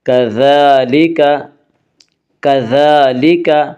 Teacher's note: ذال کے اوپر کھڑا زبر ہے، کھڑا زبر قائم مقام ہے الف کے، اس لیے کھڑا زبر کو ایک الف کے برابر کھینچ کر پڑھیں گے